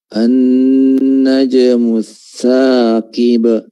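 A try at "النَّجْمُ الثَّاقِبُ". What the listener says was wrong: Huruf qafnya harus tebal ya. Thaqib, thaqib.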